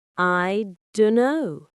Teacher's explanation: The t sound from don't drops, and the k sound from no is very soft. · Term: dropping sounds